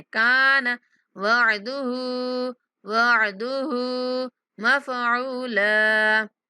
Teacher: नून को नहीं खींचना, काफ को खींचना है